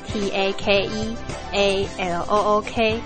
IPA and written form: tek e lʊk (take a look)